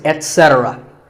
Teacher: remember that the stress is on se.